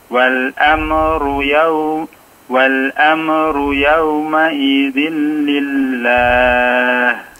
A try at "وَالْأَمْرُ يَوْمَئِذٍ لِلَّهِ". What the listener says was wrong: Amru jangan diamekan Pak ya, mimnya dicoba.